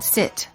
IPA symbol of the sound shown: ɪ